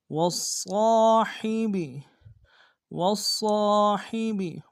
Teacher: واو کو صاد کے سامنے لائیں گے، صاد کو موٹا ادا کریں گے، صاد کے ساتھ تشدید ہے، زور دیں گے ، اور صاد کے ساتھ الف مد کے درمیان میں کھینچیں